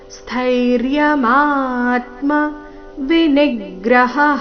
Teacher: ನೀ ಮೇಲೆ ಆಘಾತ ಹ ನಂತರ ವಿಸರ್ಗದ ಉಚ್ಚಾರಣೆ